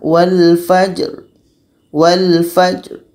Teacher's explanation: contoh yang terakhir dalam surah al-fajr di sini ada huruf Jaja ini adalah Qalqalah Jadi kita mesti dapatkan pantulan suaranya